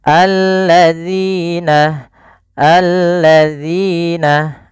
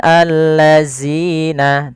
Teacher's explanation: makhrajnya adalah ujung lidah kita menempel dengan gigi sari atas kita. Alladzina, alladzina, bukan allazina, tidak.